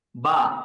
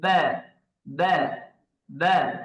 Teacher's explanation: আ হবে না, মুখ খুলে যাবে না